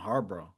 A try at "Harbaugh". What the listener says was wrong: Yeah, you said it like Marlboro, like a Marlboro Red.